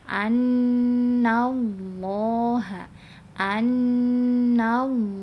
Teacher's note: Jadi jangan dibaca annallaha, anna, no, annallaha, tapi annallaha. Jadi yang dibaca tebalnya itu adalah huruf lamnya, ya, pada kalimat Allahnya. Huruf nunnya jangan ikutan dibaca tebal.